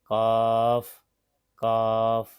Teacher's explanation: قاف کے مخرج سے تھوڑا سا منہ کی طرف ہٹ کر وہاں سے کاف ادا ہوتا ہے